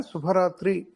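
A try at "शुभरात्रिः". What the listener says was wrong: శుభరాత్రి విసర్గ.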